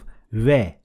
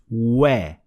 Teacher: shape your lips in an O shape, and it will produce, instead of ve, it will produce we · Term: wa sound